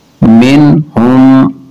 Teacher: نون ساکن کے بعد ہا حروف اظہار ہے، اس لیے غنہ نہیں کریں گے